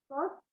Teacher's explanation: makhrajnya ada di ujung lidah, menyentuh dinding gigi seri bawah.